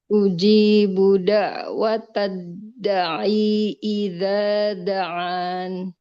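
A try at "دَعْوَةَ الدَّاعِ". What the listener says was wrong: Dalnya panjang. Da'watad da'i.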